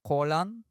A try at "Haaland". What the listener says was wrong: It's not Holland, it's Haaland. Haaland.